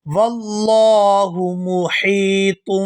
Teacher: ہا کو یا ساکن کے ساتھ ملائیں گے تو کھینچ کر ادا کریں گے · یہاں لفظ اللہ کے لام کو پورا ادا کیا جائے گا کیونکہ اس سے پہلے زبر ہے